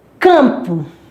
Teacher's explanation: ela nasaliza a vogal. Por isso que aqui é um dígrafo vocálico, dígrafo nasal.